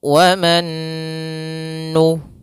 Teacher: Nun yang pertama dimasukkan kepada Nun yang kedua dan ditahan · maka kita masukkan dahulu wanu ya kemudian ditahan dulu sebanyak e ditahan gunahnya sepanjang dua harakat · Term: idgham bighunah, Idgham bighunah